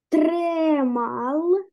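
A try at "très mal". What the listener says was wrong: Вот, тре маль. У нас мягкая будет маль. Ле всегда будет мягкая.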